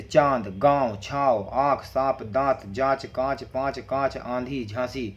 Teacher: अनुनासिक जिन शब्दों के उच्चारण करने में हवा मुख के साथ नाक से भी निकलती है